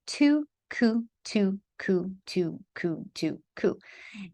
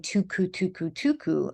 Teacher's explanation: And so compound articulation is actually where the front of the tongue is saying two, and the back of the tongue or the middle of the tongue is saying ku